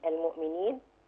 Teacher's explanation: عندي حرف الياء هنا مد طبيعي حركتين المؤمنين. وعند الوقف عليه ممكن يبقى عارض للسكون.